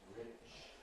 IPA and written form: rɪʧ (rich)